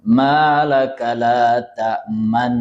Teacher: Idgham al ghunna ya, didengungkan.